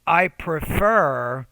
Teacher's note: you want to put stress on the second syllable so make that second syllable clearer louder longer and higher pitched